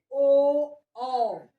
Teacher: कंठ और ओष्ठ दोनों आपस में मिलते हैं, दोनों से ही ध्वनि बाहर निकलती है, इसलिए इसे हम कहते हैं कंठोष्ठी।